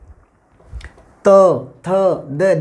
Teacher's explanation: त थ द दांतों से टकराता है, इनको दंत्य कहते हैं